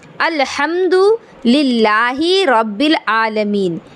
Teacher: रा पर ज़बर है, रा को पुर पढ़ेंगे।